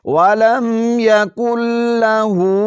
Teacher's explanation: لام پر جو زبر ہے اس کو کھینچنا بالکل نہیں ہے، ہاں ہاں پر الٹا پیش ہے، اس کو ہم نے کھینچنا ہے۔